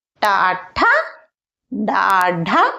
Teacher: ఈ లెటర్స్ను పలికేటప్పుడు మన నాలుక మూర్ధను టచ్ చేస్తుంది అనమాట